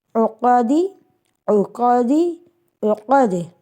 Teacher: عو قاف زبر قا عقا دال زیر دی عقادی عقادی عقد عین کی آواز درمیانی حلق سے دبا کے نکالیے، قاف کو موٹا کر کے پڑھیں